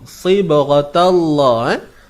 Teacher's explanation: Kalimah Allah ni tebal. Ingat, ta ni jangan tebal.